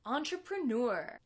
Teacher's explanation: it comes from the French we'll hear the stress a bit on the first syllable but mainly on the last syllable